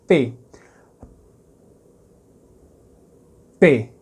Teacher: o que acontece se você segurar um p a p ou seja o ar não vaza ele só sai quando você solta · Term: oclusivos